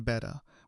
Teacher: Australian English tends to use a relaxed, lazy version of that flap sound, similar to the American style, but combined with an incredibly loose, flat mouth shape